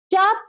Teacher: चा महाप्राण नहीं अल्प प्राण है, तालब्य तो है लेकिन महाप्राण नहीं अल्प प्राण है